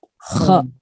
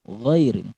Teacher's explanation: Kho itu getarannya kerasa. Kalau gho nggak ada.